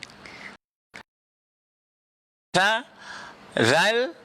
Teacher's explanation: Huruf lathawi ni ada 3 kan, tha, kemudian kita ada zal. Lathawi ni maknanya ialah hujung lidah itu, ya, makhrajnya, maka dia kena bertemu dengan hujung gigi.